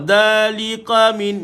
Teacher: Dengan ka pula, dia mesti angin keluar.